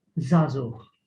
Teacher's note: The first ein, it is not pronounced because it is found at the center of the word, but then at the end, it is pronounced as a h. Zazuch, which means a male youth.